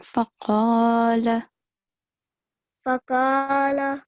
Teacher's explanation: Because qaf is carrying a fatha stroke, right? And it's followed by the alif of elongation. So you have to prolong it for 2 seconds.